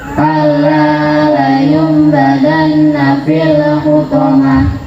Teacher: maka suara nun sukun atau tanwin berubah menjadi suara mim mati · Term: iklab